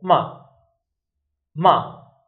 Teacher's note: the fourth tone is a line from up to down. And the our pitch is the same from high to low.